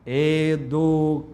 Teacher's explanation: O nau é que é forte, é uma oxítona.